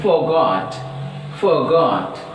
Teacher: here for is a prefix, so that stress is on second syllable, that is G.